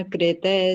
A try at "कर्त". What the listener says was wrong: कृत क्यों बोला, कर्त, कर्त, जो ऊपर र होता है ना, अर की तरह उसको बोलते हैं, ऊपर र को। मतलब पहले पहले वाला स्वर आ जाता है, फिर र बोलते हैं, जैसे अग्निर, मनसा।